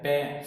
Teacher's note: दोनों होठ इसमें यूज किए जा रहे हैं, तो ये ओष्ठ्य कहलाओगे